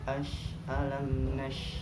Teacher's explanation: sifatnya shin adalah hamas. Hamas adalah berjalan nafas.